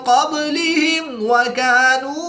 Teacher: میم ساکن کے بعد حرف واو ہے تو یہاں پر اظہار شفوی ہوگا, غنہ نہیں کریں گے بلکہ میم ساکن کو ظاہر کر کے پڑھیں گے